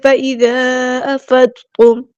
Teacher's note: تو یہ ڈسکنیکٹڈ مد ہے، مد منفصل ہے. اس کو ہم نے 4 کاؤنٹ لمبا کرنا ہے